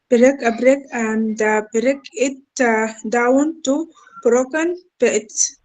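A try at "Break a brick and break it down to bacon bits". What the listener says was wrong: Sorry. It's not broken. It's bacon. Bacon bits. Bacon. The last two words is bacon bits. Yeah, not broken.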